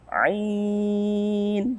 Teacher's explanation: Nah, itu baru mad tabi'i yang berada pada akhir kalimat atau akhir ayat. Maka kita membacanya sebagai mad 'arid lis-sukun. Sebanyak 2 harokat boleh, 4 harokat boleh, ataupun maksimal sebanyak 6 harokat.